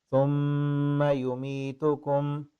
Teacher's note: میم پہ غنہ بھی کرنا ہے نا، میم مشدد ہو جہاں پہ نون مشدد ہو تو غنہ کرنا ہوتا ہے